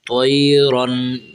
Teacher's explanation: یہاں حرف تو بھی موٹا کرنا ہے اور یہ را جو کھڑی ہے یہ را کو بھی موٹا پڑھنا ہے